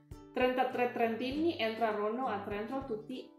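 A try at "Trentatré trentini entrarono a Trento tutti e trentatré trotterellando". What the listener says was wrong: Trento. Too much tra. Too much tra.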